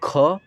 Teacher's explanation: ख में क्या होता है ज्यादा हवा निकल रहा है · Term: महाप्राण